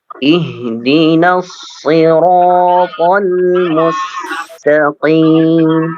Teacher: Jadi hanya sod saja yang apa namanya dibaca tebal. Nunnya tidak. · Ya, sad tebal, ra tebal, ra tebal